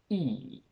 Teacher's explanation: I get E, which is a front closed sound.